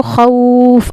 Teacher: اب اس واو کو بھی لین کریں گے نرم آواز کے ساتھ پڑھیں گے